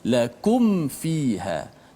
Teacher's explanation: Sebab mim dengan huruf waw dan min dengan huruf fa, dia sudut makhrajnya dekat. Ketiga-tiganya melibatkan bibir belaka. Mim bibir, fa juga bibir, waw juga bibir. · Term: izhar syafawi